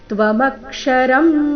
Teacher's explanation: ಮ ಮೇಲೆ ಆಘಾತ, ಅನುಸ್ವಾರ, ಉಚ್ಚಾರಣೆ ಮ ರೀತಿ